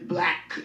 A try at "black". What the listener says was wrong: Why do you say it like that? No, you said it with like a caps lock at the beginning and the